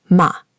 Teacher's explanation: the fourth tone falls sharply, like a command or a firm no. · A quick, strong drop in pitch.